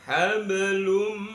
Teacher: wajib bunyi n pada hablun dimasukkan ke dalam mim. Jadi, hablum namanya bacaan idghamunah dimaksudkan dengan mendengung.